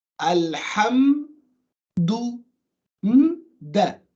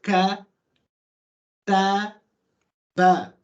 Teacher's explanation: There's nothing between the meme and the dal. There's no sound between the lam and the ha and the meme and the dal. So what this results in, letters coming into contact with each other with the possibility of now interacting with each other. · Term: sukoon